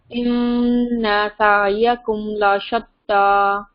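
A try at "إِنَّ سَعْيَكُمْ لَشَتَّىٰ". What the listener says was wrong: इन्ना को लंबा नहीं करें, इन्ना,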